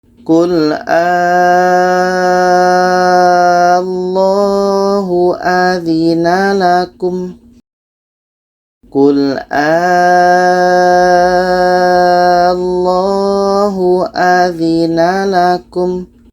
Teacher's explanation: Kita panjangkan 6 harkat baru masuk ke la-nya. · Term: mat farku